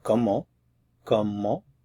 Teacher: When you say the word comment by itself, you do not pronounce the T at the end. However, when a word follows that begins with a vowel, there's liaison.